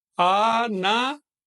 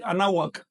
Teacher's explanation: Esto es una consonante, la consonante W, que en náhuatl tiene una pronunciación un poquito cerrada. Los hombres la pronuncian así, anáhuac, y las mujeres anáhuac, todavía más cerrado, casi tirando a B corta o a F.